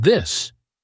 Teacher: vibrate your voice for the strong ti in this